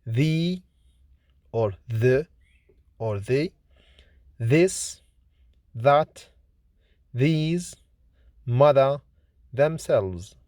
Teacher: The is voiced, lenis, dental, fricative consonant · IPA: /ð/